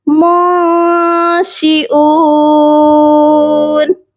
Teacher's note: اس نون ساکن پر بھی اخفا کیا جائے گا، آواز کو ناک میں چھپایا جائے گا. اور بہت سے لوگ شیون پڑھتے ہیں، شیون نہیں پڑھا جائے گا، یہاں پر حمزہ کی آواز بالکل کلیئر ہونی چاہیے.